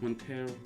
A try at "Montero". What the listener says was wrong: No, actually, every single time you say her last name, you have to say it by rolling your R now.